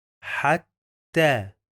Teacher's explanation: بننطقه مرتين عشان عندنا شدة